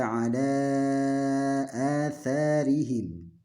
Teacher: Atharihim ala, panjang 4-5 harokat. Atha ini 2 harokat. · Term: mad jaiz munfasil